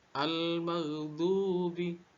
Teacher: dibaca dua harakat pada huruf du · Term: mad tabi'i